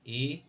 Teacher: अर्धसमृत, इसमें आधा मुख बंद सा रहेगा